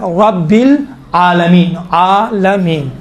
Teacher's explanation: تو اب یہاں پر بھی الحمد للہ رب العالمین, رب را پر گفتگو ہے. رب را کو چونکہ زبر ہے موٹا تلفظ کیا جاتا ہے